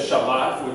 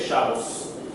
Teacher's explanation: Instead of Shabbat, which is the proper way of saying it in Hebrew, they say Shabbos. And they put the emphasis at the beginning, like a European language, rather than at the end, like a Middle Eastern language. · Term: Ashkenazic pronunciation